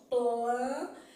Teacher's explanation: eu faço l porque eu coloco a língua atrás do dente